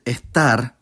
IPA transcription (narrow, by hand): eˈʰtar